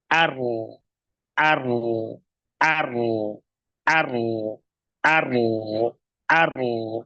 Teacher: ujung lidahnya ya menempel pada di atas dua gigi seri atas ya tengahnya turun pangkalnya naik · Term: huruf ro